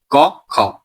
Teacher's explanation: तो क और जो ख है उनका उच्चारण स्थान है कंठ